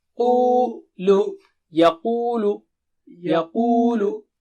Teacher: Qu will become high and thick.